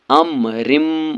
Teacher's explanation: ہے، ڈائریکٹ اس کو میم کے ساتھ ملا کر پڑھنا ہے۔ یومن کے 4 حروفوں میں سے میم آیا ہے، اس لیے یہاں پر گنہ کے ساتھ ملا کر پڑھنا ہے ، اس کو ادغام مع الغنہ اور ادغام ناقص بھی کہتے